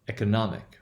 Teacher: Okay, which means we would have a full value, which means we would have the ek would be the short value, the first syllable would be the short value for e. The o there in the second syllable, it is not stressed, right? It would be a schwa. Then nomic, that would once again be a short value, and then ik would be the reduced value for I, right?